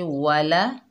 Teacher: वाव के ऊपर ज़बर, लाम के ऊपर ज़बर, दोनों को बगैर खींचे पढ़ेंगे। वाला, होंठों को गोल करके वाव को अदा करेंगे।